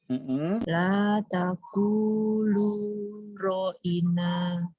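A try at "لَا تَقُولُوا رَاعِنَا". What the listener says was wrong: Ro ada alifnya, Teh. Ro ada alifnya berarti itu ciri 2 harokat. Nanya juga ada alif. Naknya ada alif. Ro'ina. Harus nampakkan bunyi alifnya.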